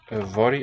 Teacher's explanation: Yfory, a single F in Welsh, is a voiced V sound. Y is a vowel.